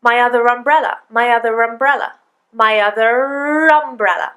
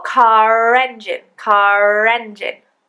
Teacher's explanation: We're connecting the sounds together with an R. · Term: intrusive R